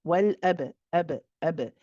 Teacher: So this means that we are going to, once our lips come together for the ba, we bounce off the lips, then bounce and separate. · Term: qalqala